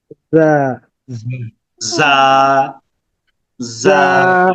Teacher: ঝিঝি পোকার মতো পাতলা আওয়াজে বাতাস বের হবে